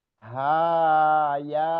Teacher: Ha dan ya itu dua harakat saja